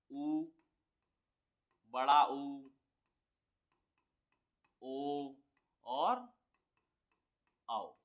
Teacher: होठ हमारे गोल रहेंगे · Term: व्रतमुखी